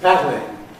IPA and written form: ˈpædlɪŋ (paddling)